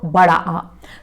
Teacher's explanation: जब आप बड़ा आ बोलते हैं तो आपका मुंह सबसे अधिक खुलता है। इससे ज़्यादा मुंह किसी दूसरे स्वर को बोलने में नहीं खुलता। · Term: विवृत स्वर